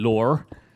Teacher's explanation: I really hit the R in lore occasionally, and like, my accent is usually very kind of RP, British, BBC kind of accent. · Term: Hampshire accent